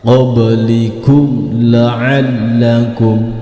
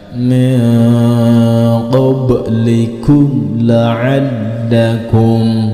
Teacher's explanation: Di huruf mimnya tidak boleh dipantulkan serta tidak boleh didengungkan. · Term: bacaan idhar